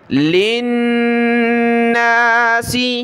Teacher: لام کو نون کے ساتھ ملانا ہے، غنہ ہوگا، نون کے اوپر تشدید ہے۔